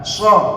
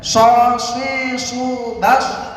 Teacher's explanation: Sama seperti sa, cuma shad itu bibirnya dikedepankan.